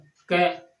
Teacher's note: क के उच्चारण में कम समय लगा, मतलब कम वायु बाहर निकली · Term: अल्प प्राण वर्ण